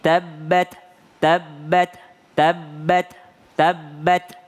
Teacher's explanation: huruf Ta jangan sampai ada tambahan S di belakangnya · lidah bertemu dengan pangkal gigi depan atas · ketika membaca tabbat ada itu berarti menambah huruf t di belakangnya harusnya adalah ujung lidah bertemu dengan e pangkal gigi depan atas tabbat jadi yang keluar cuma angin